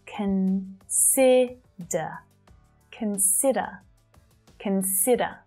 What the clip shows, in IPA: kən 'sɪ də